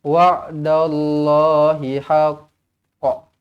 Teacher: Bila kita berhenti pada qalqalah yang mana dia ada sabdu di hujung ayat, maka kita kena lambatkan sikit lantunan dia. Kita panggil dia dengan qalqalah akbar.